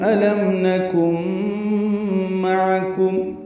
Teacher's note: نکن میں نون ساکن ہے اور اس کے بعد میم آنے کی وجہ سے ادغام ہے، ادغام مع الغنہ ہوگا